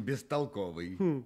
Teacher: соседству глухим звуком сам начинает звучать глухо и превращается в звук получается глухой сосед его оглушает